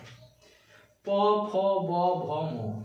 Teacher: এই ব্যঞ্জন ধ্বনিগুলি উচ্চারণের সময় কি হয়? দুটি ঠোঁট স্পর্শ করে। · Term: ওষ্ঠ